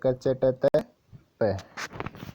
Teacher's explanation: क वर्ग है वो कंठे है, तालव्य च वर्ग है, वर्तस्य ट वर्ग है, दंते त वर्ग है और ओष्ठे प वर्ग है। ओके दोस्तों, इसी क्रम में याद रखेंगे, कंठे तालव्य वर्तस्य दंते ओष्ठे और क च ट त प। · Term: उच्चारण स्थान